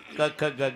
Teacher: क ख ग घ हे कंठे स्थान आहे. इथे उगम आहे.